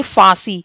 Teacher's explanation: गले से और नाक से दोनों से आवाज आई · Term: चंद्रबिंदु